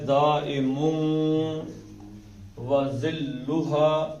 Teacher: آگے واو آ گئی تو ہونٹوں کو گول کرنا ہے